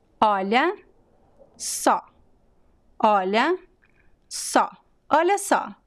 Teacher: So both O's are very open.